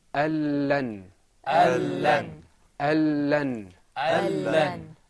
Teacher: The noon, because there's idgham here, we don't pronounce the noon, we go straight into the lam.